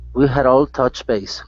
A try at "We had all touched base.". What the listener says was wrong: Okay, give me that T sound. Touched. We had all touched base.